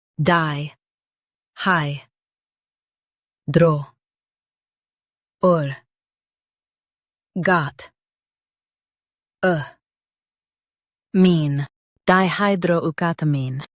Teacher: Emphasize er and keep got clear.